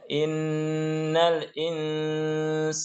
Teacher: kalimat insana juga dibaca dengung karena situ ikhfa, ya dengungnya dengan samar-samar. · Nah, di situ ada nun tasydid. Innal itu harus dengung.